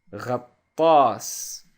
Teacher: the letter ghain in Arabic is pronounced like making a gargling sound in the throat